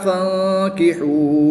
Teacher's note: نون ساکن کے بعد کاف حروف اخفا میں سے ہے تو یہاں پر ہم اخفا یعنی غنہ زمانی کر کے پڑھیں گے